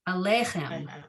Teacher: So I mispronounced it on that second time, putting the emphasis not on, I shouldn't put it on the last syllable. I should put it on the second syllable